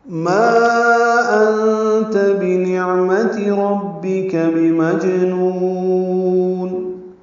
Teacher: ما پہ مد منفصل الف مدہ کے بعد حمزہ آنے کی وجہ سے